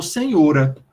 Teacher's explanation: senhora passou a ser pronunciada com o aberto e não fechado